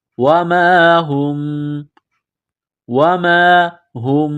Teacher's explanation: وما ہم، وما ہم، میم ساکن کے بعد با ہے تو یہاں آواز ناک میں چھپائیں گے، غنہ کریں گے، اس ناک میں آواز چھپانے کو اقلاب کہتے ہیں